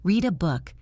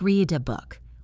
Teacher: The D connects to the A. It sounds like read a book.